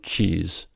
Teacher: your tongue is in the position to make a ta sound, but instead of releasing the air entirely quickly, you release it only partially and turn it into a fricative, thus resulting in the sound ch. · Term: affricate